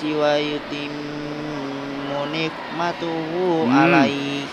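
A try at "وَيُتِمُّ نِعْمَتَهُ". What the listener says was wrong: wa yutimmu nikmatahu bukan nikmatuhu langi dari wa yutimmu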